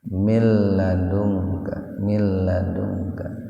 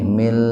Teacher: Jadi membacanya nunnya dimasukkan ke lam tanpa mendengung. Jadi tidak ditahan 2 ketukan. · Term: idgham bila guna